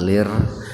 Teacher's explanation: Asalnya itu lam alif lam ro, lir. Nah, kemudian ro-nya dibaca tarkik